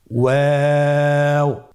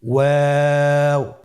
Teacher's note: 2 ঠোঁট গোল করে মাঝখানে ফাঁক রেখে হরফটি উচ্চারণ করতে হবে।